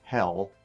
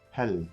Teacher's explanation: the L in German is similar to the L in English except for it's more at the front of the mouth.